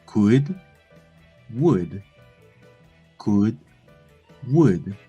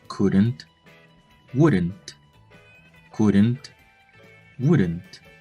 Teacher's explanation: The first thing to be noticed is that the Spanish consonant L is not pronounced in these words. · Primero que nada, la consonante L no se pronuncia en estas palabras. Secondly, the U sound is shorter and not that rounded as the normal U.